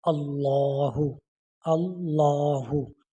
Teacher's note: اب یہاں پر لام آف اللہ جو ہے اس سے پہلے حمزہ کے اوپر زبر ہے، تو اب ہم اس کو یہ لام آف اللہ جو ہے یہ موٹا پڑھا جائے گا، اللہ اللہ، اس طرح۔